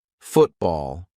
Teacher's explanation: When a syllable ends in T and it is followed by a consonant sound, we're going to use the glottle stop.